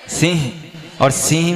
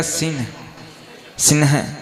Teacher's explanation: न का उच्चारण अनुस्वार के अनुसार लेना अपने को पूरा न का उच्चारण नहीं करना